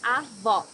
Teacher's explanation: Here you need to hear the sound of the last O in the syllable. It should be an open O, as we say in Portuguese.